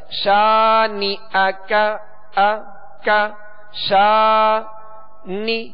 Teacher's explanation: اسی طرح شانئک، تو اس کو ہم نے تھوڑا سا کھینچا، اس الف مدہ، تو اس کو ایک الف کی مقدار میں کھینچ کر پڑھیں گے